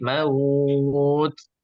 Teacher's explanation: Keluar. Hamas, dia punya sifat hamas. Dia keluar udara sedikit.